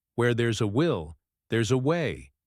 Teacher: notice how will and way are emphasized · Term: correct stress